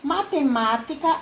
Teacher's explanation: matemática a sílaba tônica é má